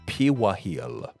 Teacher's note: in the Haitian Creole, the R in perejil would sound more like a W, and they would pronounce this word something like piwahil.